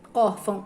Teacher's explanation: o acento tônico é or, porque a sílaba mais forte de órfão é or. E tem acento gráfico, que é o acento agudo.